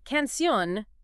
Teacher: But canun meaning song ends an end and the stress is on that last syllable